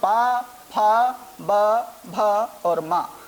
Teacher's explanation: जब हम पा बोलते हैं तो हमें अपने होठों को आपस में मिलाना पड़ता है। बिना हम होठों को मिलाए पा का उच्चारण नहीं कर सकते हैं, बिना होठों को मिलाए हम फा नहीं बोल सकते हैं। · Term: ओष्ठ, पवर्ग